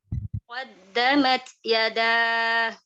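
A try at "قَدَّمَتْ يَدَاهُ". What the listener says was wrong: Nah, hati-hati ya dalnya agak apa ya? Kadang-kadang kurang runcing kayaknya ujung lidahnya. Iya, jadi harus runcing gitu ya. Ujung lidah namanya juga ya. Qaddamat yadah. Jadi suaranya itu betul-betul syiddah bentukannya.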